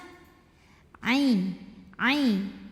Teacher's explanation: huruf ain keluarnya dari tenggorokan bagian tengah. Ain, ain. Bukan i, bukan dari tenggorokan bawah, jangan masuk ke hamzah, ini dari tengah.